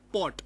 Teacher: to pronounce p you need to articulate between the lower lip and the upper lip so it'll be like and then to uh release the o · Okay, and when we talk about the bilabial sounds, the active and the passive articulator, that is the upper lip and the lower lip, they close. Okay, and the flow of air is obstructed behind the lips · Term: plosive sound